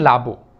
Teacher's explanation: আলাবু থেকে লাবু। এই আলাবুকে যখন আমরা লাবু বলি তখন দেখেন এখানে একটা আ ছিল, এই আটা ওই পাশে গিয়ে লোপ পেয়ে গেল। এই যে লোপ পেয়ে গেছে এই প্রক্রিয়াটাকে আমরা বলবো স্বরলোপ। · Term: আদি স্বরলোপ